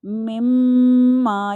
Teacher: ناک میں آواز, یعنی ناک میں آپ کی گنگناہٹ محسوس ہوگی. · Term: گنہ